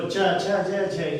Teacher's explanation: च छ ज झ ये तालु पे जीभ स्पर्श होती है